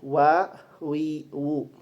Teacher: Huruf wau termasuk dalam makhraj syafawi. Syafawi itu adalah bibir. Kemudian dalam tarikatul khuj dia termasuk yang mutawasit sama pertengahan antara letupan dan gesekan.